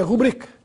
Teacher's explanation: A palavra é rubrica, tem a sílaba tônica na sílaba bri, portanto é uma paroxítona